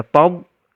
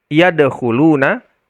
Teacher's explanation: Nah, ini rokhawah mengalir suaranya, tob. Tapi yadkhuluna, nah itu tertahan suara kita. Tertahan, baru ada qalqalahnya.